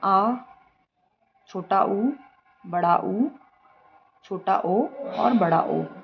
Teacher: जिन स्वरों के उच्चारण में जीभ का पिछला भाग सामान्य स्थिति से ऊपर उठता है उसे पश्च स्वर कहा जाता है।